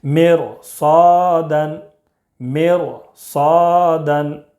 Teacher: اگر ہوگا تو را ساکن باریک نہ ہوگی بلکہ پر ہوگی۔ تو را ساکن کے بعد حروف مستعلیہ کے 7 حروف میں سے صاد ہے، اس لیے را کو پر پڑھیں گے